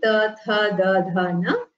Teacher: All five, the tongue will touch the teeth. So they are called dantya varnas in Sanskritam.